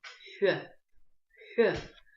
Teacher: Произносим букву Х, но при этом округляем губы. Получается у нас звук Х.